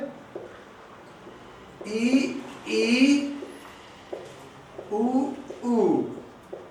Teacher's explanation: जब हम उच्चारण कर रहे हैं तो मुख द्वार न के बराबर ही खुल रहा है। ई उ ऊ मुख द्वार न के बराबर खुला है। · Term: समृद्ध स्वर